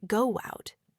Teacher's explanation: You might instinctively hear a tiny W sound subtly inserted, making it sound more like go out. Or take I agree.